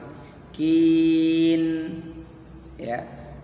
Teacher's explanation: Kin, ya. Ingat, huruf nun letaknya di belakang gigi, maka letakkan dia di tempatnya ketika dia mati. Kin, ya, dengan sedikit dengung. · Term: nun yang sukun